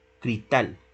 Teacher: Entonces vean que en cristal esa S se omite. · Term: omisión, omisión de esa coda